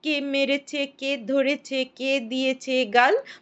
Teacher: ছন্দ বলে এর বৈশিষ্ট্য হচ্ছে এটা একটু দ্রুতলয় বলা হয় আর এর প্রত্যেকটা পর্বের প্রথমে প্রস্বর বা শ্বাসাঘাত পড়ে